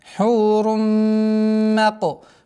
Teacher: Полная ассимиляция с полной назализацией в размере 2 огласовок.